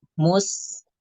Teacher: sinnya tidak dibaca tebal seperti huruf sod. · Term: huruf sin